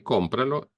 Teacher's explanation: the stress tone goes on the O, compra, and when we say cómpralo, it's still on the O